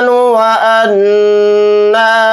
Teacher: गुन्ना करेंगे क्योंकि नून के ऊपर तशदीद है